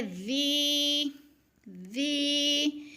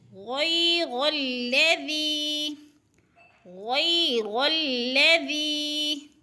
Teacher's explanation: ذی کے اوپر یا مدہ ہے اس لیے ذی کو کھینچ رہے ہیں، ذال نرم حروف میں سے ہے، نرم کر کے پڑھیں گے۔